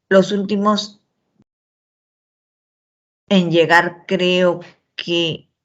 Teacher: la oración ha sido interrumpida por lo tanto tiene una entonación horizontal